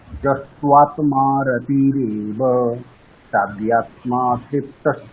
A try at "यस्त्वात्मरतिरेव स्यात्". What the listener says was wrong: হচ্ছে না, মানে বিচ্ছেদটা ঠিক হচ্ছে না, ঠিক আছে? বিচ্ছেদটা মানে ওই যে আমরা একটা লাইনকে দুটো করে ভাঙছি দুটো ভাগে, সেটা ঠিকঠাক বলুন না।